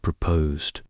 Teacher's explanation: Emphasize the second syllable posed